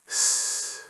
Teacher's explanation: Yes, very forward. And the air comes out in a thin, sharp stream. · Let's start with the s sound. For s, your tongue tip is close to the area just behind your top teeth. So, it's forward in the mouth.